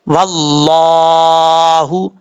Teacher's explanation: لفظ اللہ سے پہلے زبر ہے تو اس کو پر پڑھیں گے